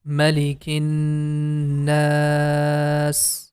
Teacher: So now you can see we have a mad letter, and after that, a temporary connecting sign is coming. In this case, the na sound, we are going to make it for 4 count, and then we are going to connect with letter sin. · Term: al-maddul aarid